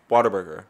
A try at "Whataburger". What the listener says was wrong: No, you're pronouncing the H too much.